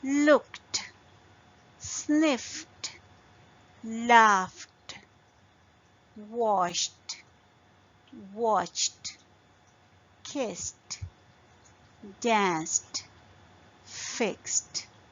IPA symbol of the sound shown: t